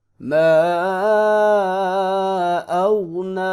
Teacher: غین کو موٹا کر کے پڑھیں گے، لیکن خیال رہے کہ غین پہ قلقلہ نہیں ہونا چاہیے